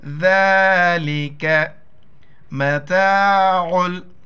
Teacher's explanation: عین کو گلے سے کرنا ہے